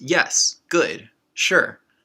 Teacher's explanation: certain exclamations and affirmations such as yes good sure these are similar to the fourth tone in chinese